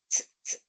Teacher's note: la punta de tu lengua, el lápiz de tu lengua está apoyado en la zona de los dientes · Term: sonidos dentales